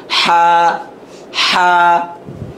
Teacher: গলার ভিতর থেকে উচ্চারণ